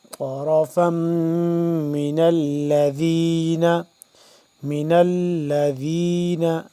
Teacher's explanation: میم مشدد ہے، اس پہ ہم غنہ کریں گے